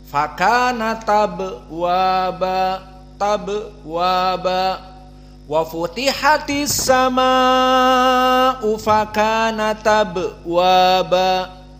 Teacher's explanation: Kan hilang. Harokatnya pindah ke ta jadi fathah. Maka langsung ba sakinah maka qalqalah. · Maka fakanat di sini naql, di mana hamzah abwaba dihapus hamzahnya, tinggal harokat fathah. pindah ke yang sebelumnya sukun.